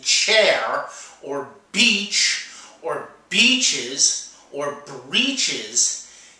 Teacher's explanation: you make the t sound and then you blend it into the sh sound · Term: ch sound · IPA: tʃ